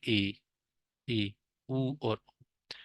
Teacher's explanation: आप मतलब मुंह आप लोगों का बहुत कम खुलता है, थोड़ा सा ही खुलता है।